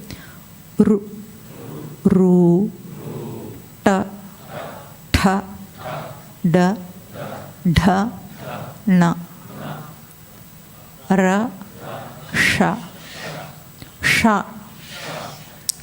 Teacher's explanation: ఇక్కడ మూర్ధన్య స్థానం అంటాం. అంటే ఇవి పలికేటప్పుడు మన నాలుక కొన భాగం ఏం చేస్తుంది, పైన మన అంగిలిని కొడుతుంది